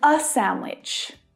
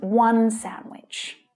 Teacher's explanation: it's much more natural to stress the number rather than stress the article, because the important information is that there is just one of something.